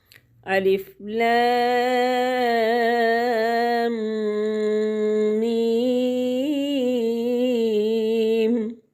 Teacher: الف لام، اس کے اوپر مد ہے، اس کو لمبا کریں گے 5 الف کے برابر۔ میم مشدد ہے، غنہ کریں گے 2 الف کے برابر، ناک میں آواز کو چھپائیں گے اور مد کو 5 الف کے برابر لمبا کریں گے۔